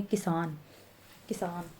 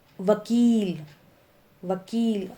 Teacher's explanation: आपको पता होना चाहिए, जब हम कोई भी मात्रा में जब हम ज़्यादा जोर डालते हैं, ठीक है, ऐसी बड़ी ई और छोटी ई में भी होता है। जब हम छोटी ई की बात कर रहे हैं तो हल्का सा बोलेंगे किसान, किसान। लेकिन जब हम बड़ी ई की मात्रा की बात कर रहे हैं तो हम बोलेंगे वकील, वकील।